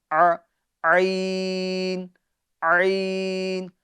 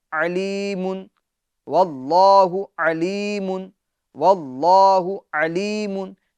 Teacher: تو عین کو درمیان حلق سے ادا کریں گے، جیسے ہم نے ہا ادا کی تھی ویسے ہی اسی جگہ سے ہم عین بھی ادا کریں گے۔